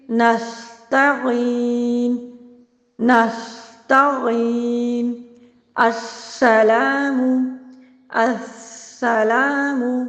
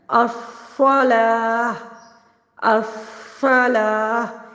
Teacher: زا اور سین دونوں باریک حروف ہیں جبکہ صاد پر حروف ہے